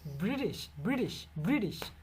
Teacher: আবার এই ব্রিটিশ British. সাউন্ডটাকে আমেরিকানরা যখন উচ্চারণ করে টিকে ডি দ্বারা পরিবর্তন করে দেয়